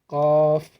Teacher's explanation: জিহব্বার গোড়া থেকে অল্প একটু আগে বাড়িয়ে তার ওপরের তালুর সঙ্গে জিহব্বাটা লাগিয়ে কাফ হরফটি উচ্চারিত হয়